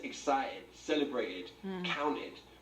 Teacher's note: you will also notice that he drops the t's